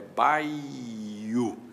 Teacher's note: Então, o que nós temos aí, na verdade, são dois ditongos. No papel, a gente representa bai, u, mas a verdadeira emissão é de dois ditongos